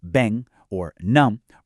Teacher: Words ending in M or N, like bem or num, are completely nasalized, meaning the air physically flows through your nose when you say them. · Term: nasal airflows